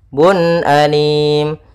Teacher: Kalau di sini dhammatain bertemu dengan hamzah, maka kita bacakan, harus kita jelaskan suara unnya karena dia bertemu dengan hamzah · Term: izhar halqi